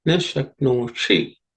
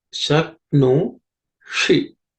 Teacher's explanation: This Shi is a cerebral Sha. As I have said, the tip of the tongue has to point to the roof of your mouth.